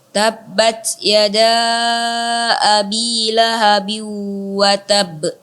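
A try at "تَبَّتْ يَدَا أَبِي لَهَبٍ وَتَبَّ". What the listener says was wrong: Iya, sedikit saja. Dilamakan lagi, dalam artian kata ditahan dulu, baknya baru dipantulkan. Tabbat yada abi lahabin wa tab. Tab.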